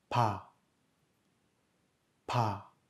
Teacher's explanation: Le biup est entre le son B et le son P. Pa, pa. Là aussi, on note l'expulsion de l'air.